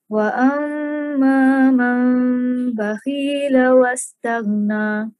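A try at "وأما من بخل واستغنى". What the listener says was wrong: Okay, bakhil tu pendek. Bakhila wastaghna. Bakhila wastaghna.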